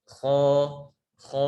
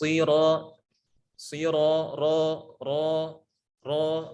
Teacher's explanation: menaiknya pangkal lidah ke langit-langit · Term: istila